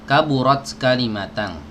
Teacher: Ada bagian yang lunak dan ada juga langit-langit yang keras. Nah, huruf kaf ini ditempelkan ke langit-langit yang lunak dan keras berbarengan ya